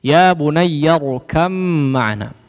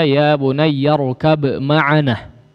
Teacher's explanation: Huruf ba masuk kepada huruf mim ya, diidghamkan dengan idgham yang digunnahkan